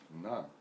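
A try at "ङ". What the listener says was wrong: Nga. Not na. Nga. I didn't say na, I said nga, like in Ganga.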